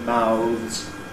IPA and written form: maʊðz (mouths)